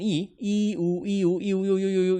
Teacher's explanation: 이를 짧게 발음한 거 우를 길게 발음하는 게 유예요. 그래서 짧게 발음하는 이우 이렇게 되는 거. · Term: 반모음